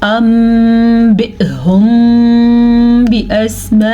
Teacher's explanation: نون ساکن یا نون تنوین کو میم میں بدل دیتے ہیں، یعنی کہ نون نہیں پڑھا جاتا، میم پڑھا جاتا ہے، اور وہ بھی غنے کے ساتھ پڑھا جاتا ہے. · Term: اقلاب